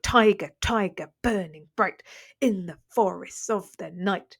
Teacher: So all trochaic tetrameter is when you have four beats per line. Okay, and each kind of beat is made up of a stressed and then unstressed syllable.